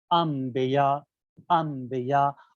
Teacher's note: اس نون ساکن کو میم میں بدل دیا جائے گا۔ اسی بدلنے کو علم تجوید کی زبان میں قلب کہتے ہیں، قلب یعنی بدلنا، اور اسے غنے کے ساتھ ادا کیا جائے گا۔